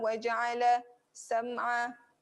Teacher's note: Okay, ada huruf ain berada di tengah. Waja'ala sam'a, tengah kerongkong.